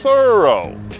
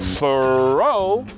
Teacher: Thorough se enfatiza na primeira sílaba. Thoreau enfatiza na segunda. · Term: sílaba tônica